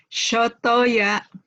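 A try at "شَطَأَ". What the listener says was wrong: Soto ayam, bukan soto ya. Kalau sotoya berarti pakai sod ya, benar. Hurufnya sod, ini shin.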